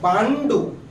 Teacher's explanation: उच्चार करून सुद्धा तुम्ही बघू शकताय पांड जीभ मुरडते बघा